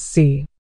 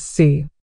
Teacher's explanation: Si for 4 is said in the 4th tone, which is a sharp, falling tone